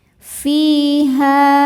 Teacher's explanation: Ha mad tabi'i dhahiri sebab ada alif didahului fathah. Cara bacanya panjang 2 harokat.